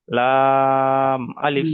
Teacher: যেহেতু লামটা তিন আলিফ পরিমাণ টান তাই এখানে টেনে পড়বো